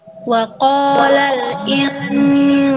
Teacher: huruf sin ini dia hurufnya tipis, jadi gunahnya jangan ikut tebal. Gunahnya tipis.